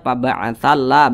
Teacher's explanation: kami jelaskan dengan detail Bagaimana cara mudah baca huruf yang bertasydid huruf lam bertasydid berarti l-nya didobel menjadi dua